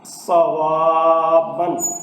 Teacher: اب صاد حروف مستعلیہ ہے، یہ پر پڑھا جائے گا۔